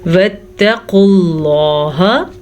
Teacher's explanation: واو پہ کوئی حرکت نہیں ہے, الف پہ کوئی حرکت نہیں ہے تو یہ نہیں پڑھے جائیں گے